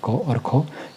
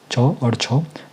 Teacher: पहले जिनका उच्चारण में स्वतंत्र में यहां पे जब आप लोग इनका उच्चारण करते हो तो कोई भी कंपन नहीं होता है स्वर तंत्रिका में। यानी कि गले में कोई भी कंपन महसूस नहीं होता है। तो वो आपके अघोष कहलाएंगे।